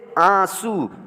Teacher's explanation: है उच्चारण नहीं होता है बल्कि नकी उच्चारण छुप जाता है सिर्फ और सिर्फ नाक से आवाज़ निकलती है नाक से पढ़ते हैं